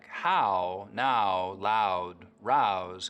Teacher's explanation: in words like how now loud rouse canadians still use that wide ow diphthong